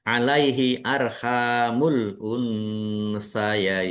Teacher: Ha fathah alif mad thobi'i panjang dua harakat